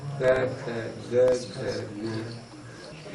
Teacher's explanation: वायु जो एकदम स्पर्श करती है क में नहीं करती ख में करती है ग में नहीं करती घ में करती है थोड़ा मतलब लाउडली बोलोगे ना क ख ग घ थोड़ा जोर